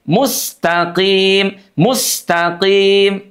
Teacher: huruf sin-nya ini, ya. Dia punya sifat mengalir suaranya. Oke. Jadi, huruf sin tidak boleh diputus mustaqim.